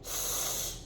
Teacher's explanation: And what that does is it creates a nice little groove for the air to flow down, and the air flows down the middle, "sss." Now, sometimes I hear this, "sss" and you can see with this picture if we compare and contrast, the air instead of flowing down the middle is flowing out the sides